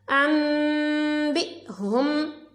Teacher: نون ساکن کے بعد با ہے تو ہم نے نون کو میم سے بدلا